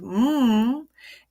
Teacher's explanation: as this sound is voiced the vocal cords vibrate while producing the MM sound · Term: nasal occlusive